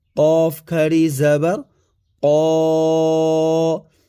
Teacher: کا نہیں قو حلق سے نکالنا ہے، اور اس کے اوپر کھڑی زبر ہے، ایک الف کی مقدار اس کو کھینچ کر کے پڑھا جائے گا۔